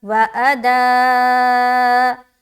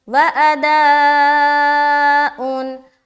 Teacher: اب یہاں پر مد ہے نا تو 3 سے 4 الف کھینچیں گے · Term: مد متصل